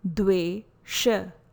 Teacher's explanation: letter D is a soft dental sound